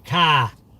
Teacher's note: it's pronounced C-A-H, car, because we don't say R